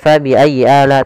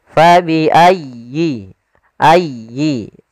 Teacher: sempurnakan di tasydid huruf ya. Jangan fabi'ayyi ala, tapi dia sempurnakan.